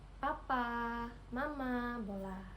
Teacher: bilabial ini terjadi ketika bibir bawah artikulator aktif bertemu dengan bibir atas artikulator pasif